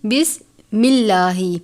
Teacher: لفظ اللہ کے لام سے پہلے زیر ہے، یعنی بسم اللہ، لفظ اللہ کے لام سے پہلے زیر ہے تو ہم اس لام کو باریک پڑھتے ہیں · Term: ترقیق